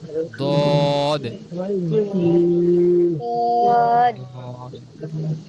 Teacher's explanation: জিহ্বার গোড়ার দুই পাশের সাইডের অংশটা সামনের সামনের যে উপরের যে মাড়ি আছে উপরের মাড়ির গোড়ার সাথে লাগবে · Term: সাত নাম্বার মাখরাজ